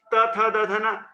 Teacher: दांतों से स्पर्श करके, दांतों पर छूती हुई इसके उच्चारण को करती है, इसलिए इसे दांत दंतई कहते हैं।